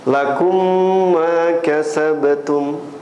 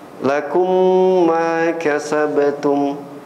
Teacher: ada ghunah ada dengung di sana idgham syafawi Idam mlinir ya diidghamkan lakum Ma kasabtum terasa kan gunahnya dengungnya